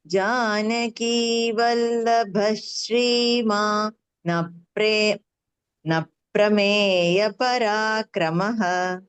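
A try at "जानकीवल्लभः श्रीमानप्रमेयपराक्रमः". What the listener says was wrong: அந்த ஸ்ரீமால நிறுத்த வேண்டாம். ஸ்ரீமான் அப்பிரமேய. அது மூச்சு விட புடிச்சுக்க முடியலன்னா ஸ்ரீமான் அப்புறமேன்னு தனியா சொல்லிக்கோங்க. ஸ்ரீமான் அப்புறமேன்னு சேர்த்து சொல்லிடுவோம்.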